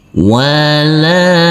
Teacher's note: huruf lam yang berfathah a ini bertemu dengan huruf alif yang tidak berharokat, maka huruf lam dibaca panjang dengan panjang 2 harokat